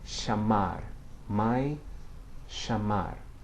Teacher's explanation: At the beginning of words or the beginning of syllables, it's much like the M in English, okay? Bring the two lips together, say mai, or chamar, where it begins a syllable.